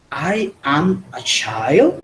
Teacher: simplemente haciendo la entonación de pregunta. Entonces nuestro cerebro inmediatamente intuye que es una pregunta, aunque gramaticalmente no esté totalmente correcto.